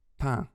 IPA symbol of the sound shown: pæ̃